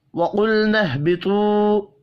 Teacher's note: قاف کو اور طا کو پر پڑھیں گے، واو مدہ کو ایک الف کے برابر کھینچ کر پڑھنا ہے۔